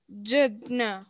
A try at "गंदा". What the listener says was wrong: No, ga. Ga, na, half, da.